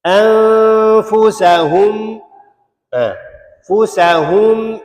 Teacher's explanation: Mim sakinah bertemu dengan hamzah ialah izhar syafawi. Hukum izhar syafawinya tak dengung. Tak dengung.